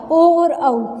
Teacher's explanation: जो हमारी प्राण वायु है उसका दबाव कंठ और ओष्ठ दोनों के ऊपर रहेगा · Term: कंठोष्ठ